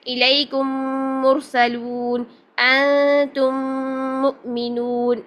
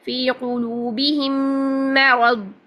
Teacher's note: پہلی میم کو دوسری میم کے ساتھ ملا کر 1 الف کے برابر غنہ کرنا۔ 1 الف ہوتا ہے 2 سیکنڈ کے برابر، 2 حرکات کے برابر، ٹھیک ہے؟ · آپ نے یہاں میم میں جب ادغام کرنا ہے، ادغام شفوی کرنا ہے تو غنہ کرنا ہے 2 حرکات کے برابر